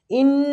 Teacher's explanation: इन्ना नून मुशद्ददा गुन्ना करेंगे